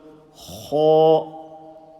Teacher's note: Full mouth from top of the throat.